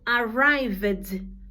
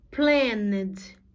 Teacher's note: depois de verbos que tem o sonzinho que vibra as cordas vocais, o sonzinho vai ser de D. Arrive, termina com vibra.